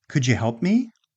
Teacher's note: the d and the y, just like did you, combine into a j